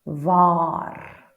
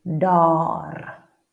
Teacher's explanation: So now the R is rolled